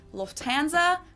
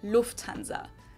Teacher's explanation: English people usually say Lanza but in German we say Lanza so the emphasis on the first syllable